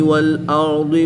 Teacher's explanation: ضاد حروف مستعلیہ میں سے ہے، اس لیے اس کو پر یعنی موٹا پڑھیں گے